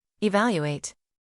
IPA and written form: ɪˈvæl.ju.eɪt (Evaluate)